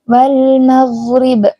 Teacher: gin itu adalah tertahannya nafas tapi mengalirnya suara. Jadi jangan almagrib, wal magrib.